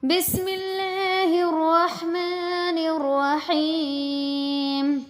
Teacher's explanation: رحمان میں را کو بھاری آواز کے ساتھ پر کر کے پڑھیں گے،